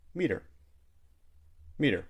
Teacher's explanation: sometimes we even delete the H sound in he, her, or him